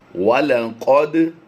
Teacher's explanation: دال حروف قلقلہ سے ہے، جب بھی حروف قلقلہ ساکن ہوں گے تو ان میں قلقلہ کیا جائے گا۔